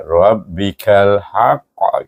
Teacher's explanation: kalau berhenti kita akan baca dengan qalqalah akbar tapi kita tak berhenti tak adalah qalqalah tu eh walaupun dia